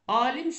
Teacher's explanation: alim sözündə biz bilirik ki, A saiti uzanır. Mən alim sözündə A-nı sözün tələffüzündə uzun tələffüz olunan kimi götürməsəm, elə necə yazıramsa elə tələffüz etsəm, aha A uzanır.